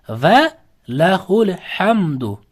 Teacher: Hamdu bu yerda m bildirib o'qiladi. Hech qanaqa g'unna nima yo'q. M bildirib o'qiladi. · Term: izhor shafaviya